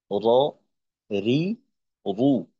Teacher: 10 নম্বর মাখরাজ, জিহ্বার আগার পিঠ তার বরাবর উপরের তালুর সঙ্গে লাগাইয়া। তো উচ্চারণটা হবে র জবর র, র জের রি, র পেশ রু, র, রি, রু।